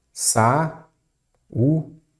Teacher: Ok, a sílaba forte é a penúltima. Paroxítona.